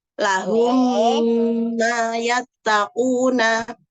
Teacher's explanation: Yang pertama idgham syafawi atau idgham misli, yaitu mim sukun bertemu mim. Dibaca dengan kurang lebih 2-3 harokat